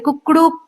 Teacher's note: शुरू में ये हस्व स्वर है। फिर दीर्घ स्वर है और लास्ट में प्लुत यानी कि जो सबसे बड़ी मात्रा होती है जिसको हम देर तक स्ट्रेच करते हैं वो दिया गया है।